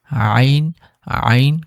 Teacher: আইন আইন গলার মাঝখান থেকে একটু চাপ দিয়ে বের হবে